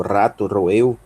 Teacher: Nós temos o Rho, tem som de R vibrante, né? É o R lá do Rio Grande do Sul